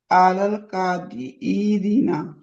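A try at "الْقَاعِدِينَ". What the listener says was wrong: काइदीना, काइदीना, आइन को खींचना नहीं है, का को खींचना है और दी को खींचना है।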